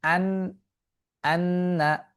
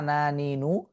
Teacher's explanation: আচ্ছা, তাই তবে তাসদিদ ও সুকুন অবস্থায় এর নাসিক্য ধ্বনি বা নাক হতে উচ্চারিত আওয়াজটি বেশি স্পষ্ট হয়